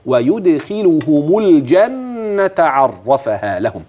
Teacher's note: فانتبه لضم الهاء وضم الميم وصلا